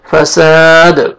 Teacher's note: دال ساکن ہو جائے گا اور حروف قلقلہ میں سے ڈبل ساؤنڈ آئے گا جب سٹاپ کریں گے